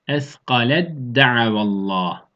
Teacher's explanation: T harfi dal harfin içine tamamen giriyor. Eskalet da'avallah şeklinde okuyoruz. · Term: tam idgam